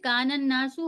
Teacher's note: ہم نون کو سیدھے نون سے ملائیں گے، جو بیچ کا الف لام ہے اسے ہم چھوڑ دیں گے، کیونکہ نون پہ جو تشدید والا نون ہے یہ حرف شمسی کے حرفوں میں سے ہے نا.